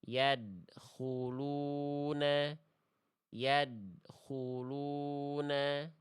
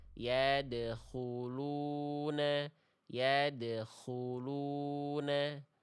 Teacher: Jadi bunyi dal di sini kita pantulkan. Ade, ide, ude, ya, bukan dibaca ad, id, ud. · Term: kolkolah